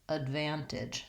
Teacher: because that first syllable is unstressed and short, we have a schwa vowel there